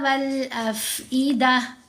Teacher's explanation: اس کے اوپر جب وقف آ جائے تو یہ تا ہا ساکن کی آواز میں بدلی جاتی ہے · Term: تا مربوطہ